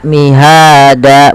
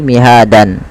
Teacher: Ketika ada dan di akhir bacaan itu dirubah menjadi panjang danya. Maka mihada, bukan lagi mihadan. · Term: mad iwad